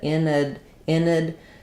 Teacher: I'm going to have a little secondary stress on in, because it's important as a prefix to know the meaning of it. Inad. So no stress on the A means it's going to be a schwa sound.